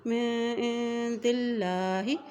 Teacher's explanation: اب یہاں دیکھیں اللہ کے نام سے پہلے زیر آ گئی ہے تو اس لیے اللہ کا نام باریک عطا کیا جائے گا